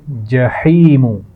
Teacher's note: ہا کے مخرج کو واضح کیجئے، اس کے بعد یا مدہ ہے